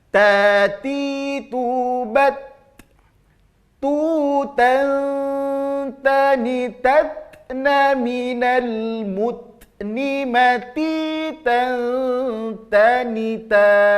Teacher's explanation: ujung lidah terasa bertemu dengan dagingnya, juga terasa bertemu dengan gigi-gigi seri atas di dalam. Ta. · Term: huruf ta